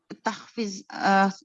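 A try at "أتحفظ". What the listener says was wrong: Ada hamzah di situ, istifham.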